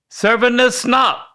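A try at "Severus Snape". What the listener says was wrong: Okay, there's no N in the first word. Sevrus.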